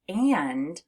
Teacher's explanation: So when you have a short A and an N, it sounds like it's coming through your nose, which is why when we say the word and, you actually feel a little bit of a buzzing in your nose. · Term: nasalized A